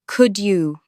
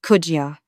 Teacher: the d and the ye sounds kind of merge into a j sound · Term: coalescent assimilation